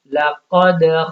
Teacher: لیکن وہی قاف یہاں پہ ساکن ہے کیونکہ اوپر جزم آ گئی تو قلقلہ ہوگا